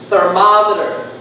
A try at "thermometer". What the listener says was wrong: So what sound did you hear? Italian A. Ma. So forget mo, it's ma. Thermometer.